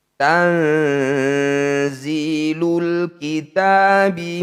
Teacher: bertemu Za disebut bacaan Ikfa tepatnya yaitu ikhfa a cara bacanya bunyi nun sukun dengungkan harakat ketika dengung lisan kita sudah ada di huruf Za